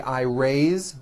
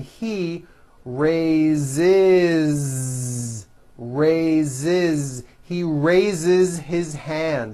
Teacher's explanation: even though it is spelled with an S it's pronounced with a voiced Z raise so we say I raise with a voiced Z ending